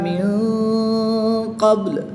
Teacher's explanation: قاف حرف مستعلیہ میں سے ہے تو اس کو پوری یعنی موٹا پڑھیں گے. با حرف قلقلہ میں سے ہے، اور جب حرف قلقلہ ساکن ہو تو ان میں قلقلہ خوب ظاہر ہوگا. پیش کو وقف میں ساکن کر کے پڑھتے ہیں.